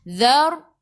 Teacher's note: Zadhi hujung lidah keluar pada gigi depan. Sebelum ra ada baris atas kena baca tebal. Takhim, lidah naik ke atas. Zar, lidah kau ke atas.